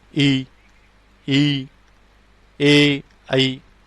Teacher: जीवा के अगले भाग से जिन स्वरों का उच्चारण होगा वे स्वर क्या कहलाएंगे, अग्र स्वर कहलाएंगे